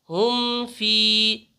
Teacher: اظہار شفوی میں میم کو ظاہر کر کے پڑھیں گے بغیر غنہ اور اخفا کے